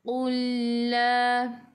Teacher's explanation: Lam bertemu dengan lam idgham mutamathilain, masuk ke dalam lam yang kedua.